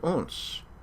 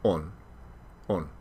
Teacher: aversion to liquids and sigmas they didn't say on they said ons takes longer to say than on ors takes longer to say than or and as the sigmas disappeared these ons and ors stayed long